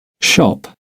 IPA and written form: ʃɒp (shop)